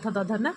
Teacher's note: त थ, द ध पूरी लाइन दंत से है।